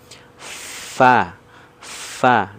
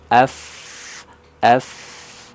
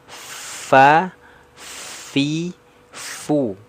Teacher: coba praktik ya Itu keluar itu makhrajnya ya yang perlu diingat makhrajnya dari gigi seri atas menyentuh ke perut bibir bawah bagian dalam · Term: huruf Fa